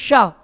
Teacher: शा बोलते समय आपकी जीव तलवे पे टच होगी